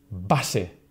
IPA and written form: ˈbase (base)